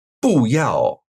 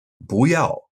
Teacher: boo meaning no or not will change to Second tone before a fourth tone word so instead of saying boo ya you'd say boo ya now